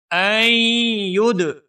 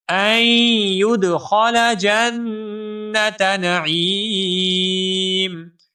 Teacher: این ید، یا کے بعد دال ساکن ہے، دال حروف قلقلہ میں سے ہے، یہاں پر بھی تھوڑی سی جنبش پیدا کر کے پڑھیں گے